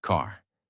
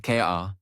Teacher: In American accent, you clearly hear the R. Car, not K-A, but car. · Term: American R sound